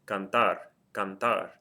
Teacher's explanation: Hopefully you're hearing that the stress of the word is on the last syllable, and it ends in something other than a vowel N or S.